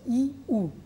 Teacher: ই এবং উ, একেবারে মুখটা বদ্ধ হয়ে আছে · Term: সংবৃত স্বরধ্বনি